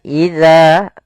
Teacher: pada lafal za ada mad tabi'i, yaitu panjang za-nya 2 harokat